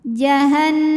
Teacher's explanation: Sebab nunnya bertasydid, maka cara bacanya adalah didengungkan. Jadi bunyi n-nya tahan sampai ada suara masuk hidung kurang lebih 2 harokat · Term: gunnah musyaddadah